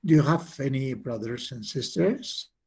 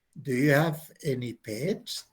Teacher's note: O no, no tengo, o sí tengo. Es un yes, no question. Entonces, la entonación sube.